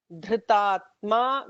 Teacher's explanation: Dhritatma with a dha, with a Mahaprana dha